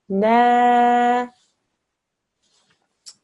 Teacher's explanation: When you have an alif madda, what you do is you read the letter that comes before it, the noon with the fatha in this case, as a na, but then you stretch the sound out for 2 seconds, because that's what an alif madda will do